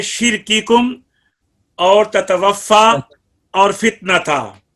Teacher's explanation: کاف اور تا میں ہمس بھی ہے اور ان دونوں میں شدت بھی ہے. تو ہمس کی وجہ سے سانس کو بند رکھنا ہے اور شدت کی وجہ سے آواز ہمس کی وجہ سے سانس کو جاری رکھنا ہے. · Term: صفت شدت